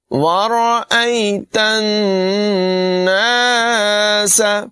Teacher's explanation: نون مشدد میں غنہ کریں گے، سین کے بعد میں سیٹی پیدا کریں گے